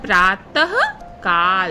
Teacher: त के बाद ह का उच्चारण हो रहा है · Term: अह की मात्रा